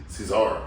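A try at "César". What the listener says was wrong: Gotta roll the R. R.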